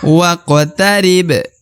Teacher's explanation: Nah, huruf ba di ujung juga termasuk huruf pantul. Karena berharokat sukun, maka dia harus dibaca pantul ya. Dikolkolahkan atau dipantulkan.